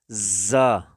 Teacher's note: زا کو ذرا سیٹی کی طرح پڑھیں گے سخت آواز میں